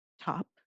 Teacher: the T is aspirated